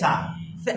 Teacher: সা উচ্চারণ হয় জিহ্বার আগা থেকে।